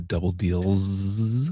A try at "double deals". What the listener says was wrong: Double deals. Well, I think the way you said it would be a fourth Z. Yeah.